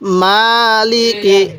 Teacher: মিমের মধ্যে টান দিব লামের মধ্যে টান দিব না কাফের মধ্যে টান দিব না